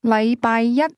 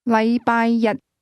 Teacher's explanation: the word one used with Monday is pronounced with a high level tone, while the word day is pronounced with a low level tone